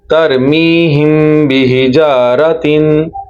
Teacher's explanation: आपको मीम की आवाज नाक से निकलती हुई खुद महसूस हो कि आपने गुना किया है